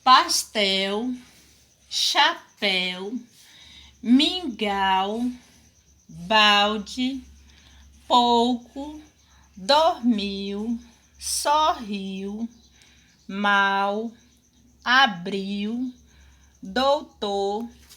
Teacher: Se ela é escrita com L ou com a vogal U, porque o som, à medida que você escreve, é diferente, mas à medida que você pronuncia essa palavra, o som do L é o mesmo som da letra U